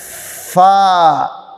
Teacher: अब ये जो लफ्ज़ मैं अब पढ़ने लगा हूँ ये बिल्कुल नरम है, फिसल के अदा होता है। इसका मखरज है ऊपर के दांत और नीचे का होंठ। तो इसको पढ़ने का तरीका ये है फा, नरमी के साथ।